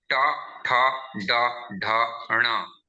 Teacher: Ta, tha, da, dha, na is dental dantya varna.